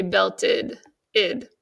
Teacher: Most often, though, we say belted, id. So if a word ends with a T and you're adding an ED, it's going to say id.